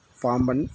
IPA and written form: paːmbɐn (பாம்பன்)